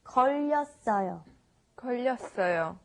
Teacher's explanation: we have the 받침 르, and you carry it over to the next syllable